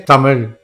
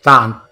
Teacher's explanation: Ta is dental. Your tongue touches the teeth.